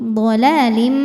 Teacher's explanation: karena ada tanwin kasrah menghadapi huruf mim maka tanwin dileburkan ke mim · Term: idgham bhunah, idgham bi gunnah